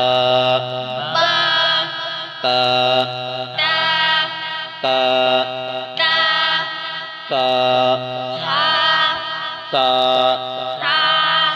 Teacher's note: تا میں سیٹی کی آواز نہیں آنی چاہیے